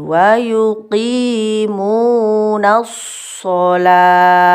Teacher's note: Tak marbuto ketika disukun atau diwakofkan, dimatikan, ini bunyinya jadi hak sukun. Shalah di bawah, di dalam tenggorokan yang paling bawah, paling dalam.